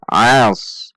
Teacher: Dengan menaikkan pangkal lidah karena sad memiliki sifat isti'la.